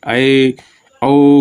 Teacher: अर्ध संवृत वे स्वर जिनके उच्चारण में मुख संवृत स्वरों की तुलना में आधा बंद सा रहता है, मतलब उसको जो जितना खुला उसके आधा ही खुलेगा, ठीक है, आधा संवृत कहलाता है।